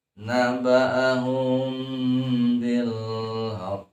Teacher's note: diikhfakan dua buah bibirnya tidak terlalu dirapatkan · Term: Ikhfa Syafawi